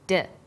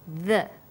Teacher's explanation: When you articulate d, you can feel your tongue against your tooth ridge, like this, d. And when you say the, your tongue is between your top and bottom teeth, like this, the.